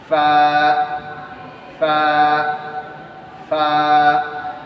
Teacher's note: ফা এর উচ্চারণ হবে নিচের ঠোটের পেটের সাথে উপরের দুই দাতে আগা লাগবে।